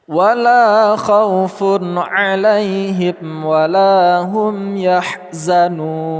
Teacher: Nu kita panjangkan dulu 2 sampai dengan 6 harakat baru kita sukunkan setelahnya huruf nun. Nama hukum tajwidnya adalah mad arid li sukun.